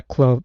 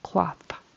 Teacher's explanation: I heard a clothe with a long O and a voiced TH. We want a short O and an unvoiced TH.